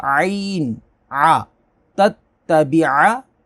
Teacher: تتبع، تتبع، عین کو اچھے سے، اکثر اس کے مخرج کو اچھے سے ادا نہیں کرتے، حلق کے درمیان سے